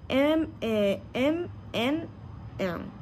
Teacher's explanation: L'air rencontre un obstacle total dans la bouche, mais échappe librement par le nez. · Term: sonantes nasales